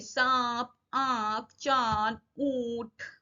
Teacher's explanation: चंद्र बिंदु, इसमें mouth open होता है, नाक से और गले से आवाज आती है। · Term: अनुनासिक